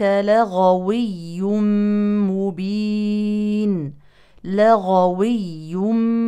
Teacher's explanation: فهي مجهوره نعم ولكنها رخوه يجري معها الصوت عكس القاف اذا نجري الصوت في محل خروج الغين ادخل الى الحلق وليس اعلى من ذلك من اقصى اللسان